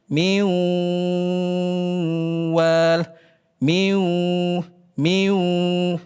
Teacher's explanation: di situ ada dua makhraj sekaligus yang aktif. Apa itu? Keluar dari mulut dan dari hidung. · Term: gunah